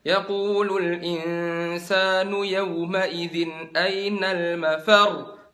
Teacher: Jadi di akhirnya itu kan ada tasdidnya, mafar. Kalian angkat suaranya. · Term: naber